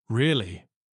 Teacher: Said with a rising tone. It's a question full of surprise.